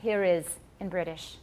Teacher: So here is becomes here is in British. If it begins with a vowel, they will put the R in. That's called a linking R.